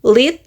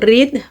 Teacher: l is lateral, while r is approximant.